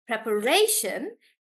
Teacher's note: because of shun, we'll stress on Ray and say preparation